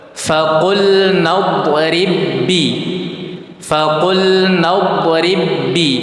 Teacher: Faqul nadrib bi. Jadi ba yang pertama dimasukkan ke dalam ba yang kedua. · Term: idgham mutamatilain, idgham mutamatsilain